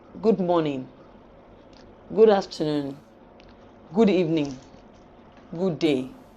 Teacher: For routine, not warm greetings, we use the low rise tune.